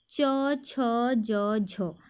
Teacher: बोलने में हमारी जो जीभ है वो ऊपर तालू से टकरा रही है